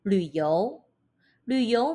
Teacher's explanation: 旅三声 the third tone，i o 游二声 the second tone